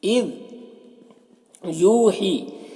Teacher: یو میں واو مدہ ہے اور ہی میں یا مدہ ہے، تو یہ دونوں کو ایک الف کے برابر کھینچ کر پڑھیں گے